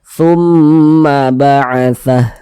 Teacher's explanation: Jadi ini huruf memnya ini kita gunnahkan, kita dengungkan. Ini suaranya itu kita tahan, kita panjangkan sejenak. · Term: gunnah musyaddadah